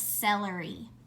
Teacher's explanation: when C's next to an e it hisses behind our teeth